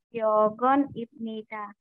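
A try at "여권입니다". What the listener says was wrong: Nah, ini sebenarnya emang benar bacanya ibnida, tapi karena hukum bacimnya biep ketemu nian itu jadi miem, jadi bacanya imnida, bukan ibnida. Nah, yang kedua, nah, yogon.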